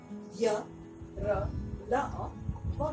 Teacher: उच्चारण करते समय हमारे मुंह में जीभ का स्पर्श किसी भी स्थान पर नहीं होता है। इस कारण इसे अंतस्थ व्यंजन कहा जाता है और इनकी संख्या भी 4, 1, 2, 3 और 4।